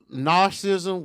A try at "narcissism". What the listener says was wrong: It's not narcissism. You leaving out You leaving out a whole fucking syllable.